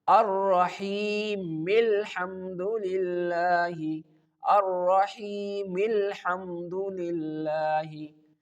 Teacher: you connect the meme directly to the lam without taking any pause or breathe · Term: Wasl